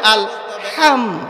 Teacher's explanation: হা এই হা এর উচ্চারণ কোত্থেকে হবে যেটাকে বলা হয় মাখরাজ এই হা এর উচ্চারণ হবে গলার মধ্য থেকে হলকের মধ্য থেকে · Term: লম্বা হা